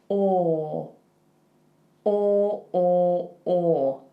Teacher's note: So your lips, they don't make an oo. It's not a tight oo like goose. It's or. Think about a fashion model, how they go like this with their lips.